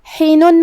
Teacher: کلمت حینن میں یہاں حرف الحا ہے، حا کی ادائیگی حلق کے درمیان والے حصے سے ہے، آخری میں نون پہ تنوین پیش ہے.